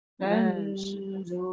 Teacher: Nun bertemu dha tu nun tidak ada tanda mati, yang tu kena dengung